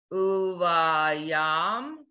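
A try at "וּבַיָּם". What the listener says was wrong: No, vowel. Whole word. Uva. Not oo. Not oo. Uva. I want to hear that yud. Not yaom. Just blend.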